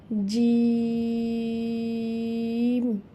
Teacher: চার আলিফ টেনে পড়বো এবং এটি একটু শক্ত করে উচ্চারণ করতে হবে